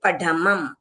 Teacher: पढ बोलेंगे तो हमारा जीभ तालू को लग के नीचे आता है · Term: ढ ढक्कन वाला